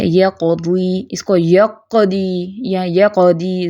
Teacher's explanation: زیادہ گونج نہیں پیدا کرنی کیونکہ یہ قلقلہ صغریٰ ہے